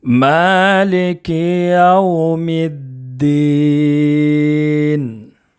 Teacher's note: میم کے اوپر کھڑا زبر ہے، ایک الف کے برابر کھینچ کر پڑھیں گے۔ بہت سارے حضرات مالک یو پڑھتے ہیں، لے نہیں پڑھنا ہے، اس کو لی پڑھنا ہے۔